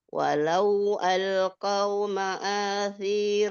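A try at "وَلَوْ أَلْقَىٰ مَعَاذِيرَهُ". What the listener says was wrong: Qo. Walau alqa bukan qau.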